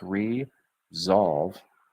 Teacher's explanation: there's that Z sounding s